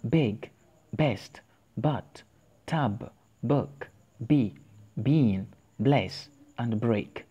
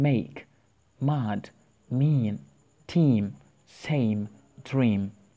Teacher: they are sounds produced by both upper and lower lips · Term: Bilabial or labial